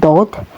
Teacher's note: Ketika melafalkan huruf ini huruf dod ya keluarnya disebut dari samping lidah.